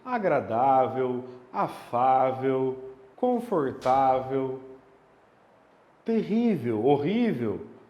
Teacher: são adjetivos terminados em l que são paroxítonas ou seja a sílaba tônica é a penúltima